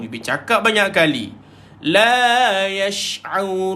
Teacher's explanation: So pada ain tengah-tengah kerongkong. Jangan pergi hidung.